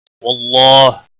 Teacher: واللہ اللہ کے لام کو موٹا پڑھیں گے زبر کی وجہ سے، اس کے اوپر کھڑی زبر ہے، ایک الف کے برابر کھینچ کر پڑھیں گے.